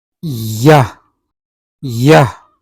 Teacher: in approximant, there is no complete blockage of air to cause explosion or make any friction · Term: palatal approximant